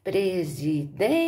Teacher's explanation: Você vai ver que a sílaba forte é o DEM, não é a última, paroxítona.